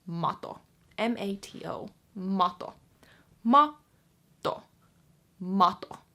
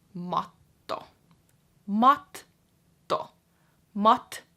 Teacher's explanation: you're gonna pause on that T a little extra longer than you normally would · the pause is between the two T's.